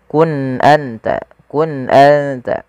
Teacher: Pada lafal kun anta, uskun anta, di sini ada nun sukun bertemu dengan huruf hamzah. Apabila ada nun sukun bertemu dengan huruf hamzah, maka kita hukumi dengan bacaan izhar, yaitu suara nunnya harus dibaca dengan jelas